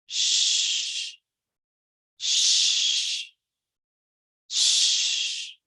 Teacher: Entonces, cuando tenemos el verbo base, que es wash, tenemos que saber que el último sonido no produce una vibración